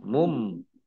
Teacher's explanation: mim sukun bertemu dengan huruf ta, bacaan izhar safawi, dibaca jelas